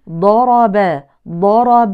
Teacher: لا يبرز طرف اللسان مع اطراف الثنايا العليا في الضاد وانما يبقى بداخل الفم